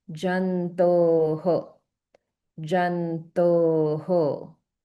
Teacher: Now, if this visarga were following an O, like in this example, then what we have is jantoho, jantoho. Okay, so it's just echoing the previous vowel sound with a h sound as well